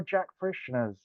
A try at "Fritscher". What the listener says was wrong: There's no Ann in my name.